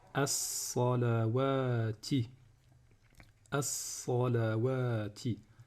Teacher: la lettre d'après, c'est une lettre qu'on appelle solaire, donc elle contient une shadda, elle sera doublée. Donc ici on va dire as-salawati, as-salawati, hafidhu ala as-salawati.